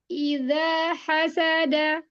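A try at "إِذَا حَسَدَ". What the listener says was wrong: Hati-hati. Jangan sampai dia terlihat kayak syiddah. Idza hasada. Hasada. Iya, agak itu lagi disambung. Yang kayak ada jeda. Ya, idza hasada.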